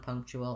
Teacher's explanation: it has first syllable stress, so the pung syllable is long.